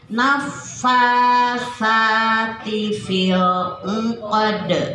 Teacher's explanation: Fa panjang dua harokat, sa dua harokat.